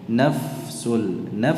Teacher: dua huruf hams, fa dan sin. Dalam pengucapannya tidak dicampur, tidak pula dijedah